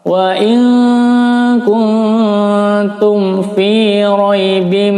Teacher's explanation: mim sukun bertemu fa, hukumnya adalah izhar syafawi, maka di sini jangan ditahan. Wa in kuntum fi, jangan tum, nah itu tidak betul.